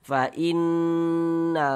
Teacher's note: Jadi bagian in itu kita tahan, kita panjangkan saja nak fainnahu yang kita panjangkan itu di bagian fainnya itu yang kita dengungkan, yang kita ghunahkan bukan di bagian na yang kita panjangkan. Jangan dibaca fainnahu. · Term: ghunah musyaddadah